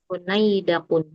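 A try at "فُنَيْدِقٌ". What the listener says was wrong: funaidakun. Ala wazan fu'ailun. Harusnya funaidikun, dalnya kasrah. funai, funaidikun. Nah, ala wazan fu'ailun.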